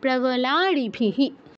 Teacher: সবার শেষের যে বিসর্গটা এটা হ এর মত উচ্চারণ হবে এটা যার সাথে যুক্ত আছে তাতে ইকার থাকায় এর সাথেও ইকার যুক্ত হবে